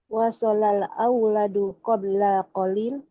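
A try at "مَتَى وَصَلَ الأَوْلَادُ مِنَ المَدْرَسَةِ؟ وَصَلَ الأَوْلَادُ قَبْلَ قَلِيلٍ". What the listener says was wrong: nadanya nadanya jangan bertanya.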